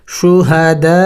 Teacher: مد ہے، اس مد کو 5 الف کے مقدار لمبا کرنا ہوتا ہے